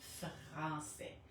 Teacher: So the French R is very much in the throat.